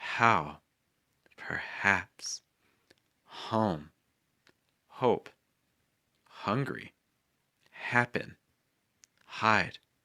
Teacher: a big push of breath out of the mouth